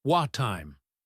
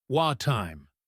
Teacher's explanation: the T at the end of what and the T at the start of time blend together